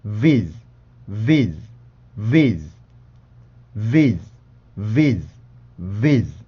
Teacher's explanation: 그러니까 우리나라의 시옷 발음처럼 생각을 하지 마시고 쌍시옷 발음인데 소리가 조금 더 이빨 가까이에서 형성된다라고 생각하고 발음을 하시면 돼요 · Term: Z 발음